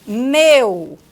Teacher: é um ditongo decrescente por quê Porque parte de uma vogal para uma semivogal · Porque parte de uma vogal para uma semivogal, está decrescendo. Então, ó, de uma vogal para uma semivogal.